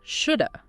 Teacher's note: should have very often combines to sound like shoulda